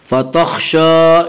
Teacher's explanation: شین کے اوپر کھڑا زبر ہے، کھڑا زبر کو ایک الف کے برابر کھینچ کر پڑھیں گے